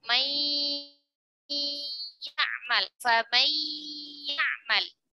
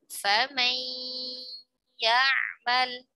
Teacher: Karena sifat gunnah pada huruf nunnya masih ada, tidak dihilangkan. Maka dinamakan idgham bigunnah. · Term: idgham naqis